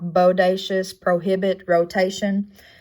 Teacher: We've got the lowercase o, in which it also has that diphthong O, U there. Its description is high, mid, back, rounded, and tense. It's going to come across as the sound of O, like bodacious, prohibit, rotation.